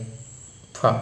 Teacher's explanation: അടുത്തത് ഫ എന്നുള്ള അക്ഷരമാണ് ഇതിന്റെ ശരിക്കുള്ള ഉച്ചാരണം പുന്റെ കൂടെ ഹ വരുമ്പോഴുള്ള നമ്മൾ ഫ എന്ന് പറയാറുണ്ടെങ്കിലും ശരിക്കും അതിന്റെ ഉച്ചാരണം പ് പ്ലസ് ഹ എന്നുള്ളത്